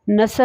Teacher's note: اب اس آیت میں جو پہلا لفظ یعنی نصر ہے، اس میں جو صاد آتا ہے وہ تجوید سے پڑھتے وقت منہ کے اندر سامنے والے نیچے کے دو دانت جیسے ثنایا سفلی بھی کہتے ہیں سے ادا ہوتا ہے۔ اگر ہم اس طریقے سے اس مخرج کو ادا نہیں کرتے تو یہ سواد کی بجائے سین ہی پڑھا جائے گا۔